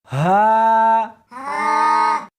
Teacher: اس حرف کو سینے کے اندر سے نکالنا ہے